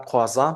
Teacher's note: otro diptongo popular del francés, que es OI, que se pronuncia como OA. En la palabra croissant, por ejemplo.